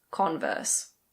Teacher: we stress the first syllable